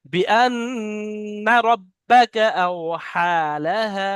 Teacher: বিআন্না রাব্বাকা আওহালাহা। বিআন, নুনটা গুণনা করতে হবে কিন্তু টান হবে না